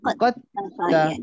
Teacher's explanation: Jadi kita terus baca qad ta. Hilang terus dal. Jangan bunyi dah dal.